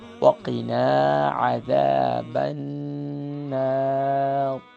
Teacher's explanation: آخر میں را کو فل ماؤتھ کر لیں گے۔ اسی دعا کو دوبارہ پڑھ لیتے ہیں ایک دفعہ پھر۔